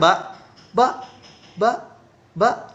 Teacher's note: Pita suaranya ketika kita mengucapkan ba itu bergetar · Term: pita suara bersuara